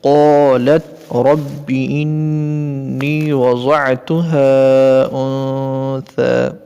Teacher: قالت نقطے والے قاف، اس کو موٹی آواز میں یعنی پر کر کے پڑھیں گے. انثى، یہاں پر ثا کو جو ہے سین جیسی سیٹی جیسی آواز نہیں نکالیں گے بغیر سیٹی کے.